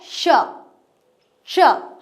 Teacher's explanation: जीभ के पिछले वाला भाग है जो ऊपर तालु पे टच होता है, ऊपर ये जबड़ा होता है, इस जबड़े के पीछे वाला भाग श।